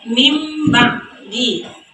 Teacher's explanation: Karena nun mati atau tanwin tersebut diubah menjadi bunyi huruf mim. Nah, ini nun mati bertemu dengan huruf ba.